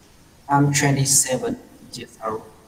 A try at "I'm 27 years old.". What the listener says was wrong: Years old. Không có S ở old. Nói lại nào, years old. Rồi, thực ra nó sẽ nối âm ở đoạn này này. Nói đúng thì nó sẽ là nối âm years old, âm Z ạ.